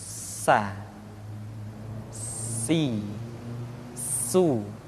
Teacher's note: Di antara sifat yang menonjol ketika kita mengucapkan huruf sa atau huruf sin adalah sifat as-safir, di mana ketika kita mengucapkan huruf sa ada suara tambahan yang menyerupai dengan suara belalang